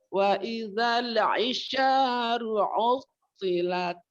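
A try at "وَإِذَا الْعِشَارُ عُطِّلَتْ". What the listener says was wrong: Nah, jangan buru-buru masuk kain. Lamnya dialirkan dulu sedikit, ditunaikan.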